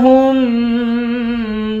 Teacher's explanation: ہاں کو میم کے ساتھ ملا کر میم پر غنہ کریں گے